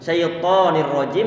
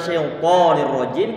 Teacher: Kalau masih mengucapkan syaitonir rajim, ini tipis nih. Berarti to-nya sebagaimana huruf to Indonesia.